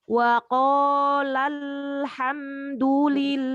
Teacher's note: hati-hati untuk lam sukun jangan sampai memantul. Jadi wa qalal hamdulillah.